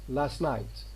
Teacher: This t following s is being omitted here. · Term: elision